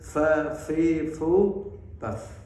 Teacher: Gara-gara dia mengucapkan fa itu dengan bibir atas dan bawah bersama-sama. Padahal untuk fa ini yang main hanya bibir bawah dengan gigi atas. · yang perlu diperhatikan itu ya hamasnya saja ya. Fa betul-betul menghembus, menyembur. Jangan fa. Ya, fa fi fu bab.